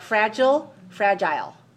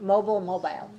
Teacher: so it's always stress on the same first syllable but the vowel sound is different in the end